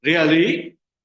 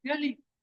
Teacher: with the rising intonation can express surprise